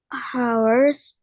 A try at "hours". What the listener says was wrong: The H is silent, so you don't say the H. No, it's hours.